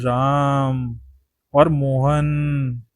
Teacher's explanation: इनके उच्चारण में लगभग तीन मात्रा का समय लगता है। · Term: प्लुत स्वर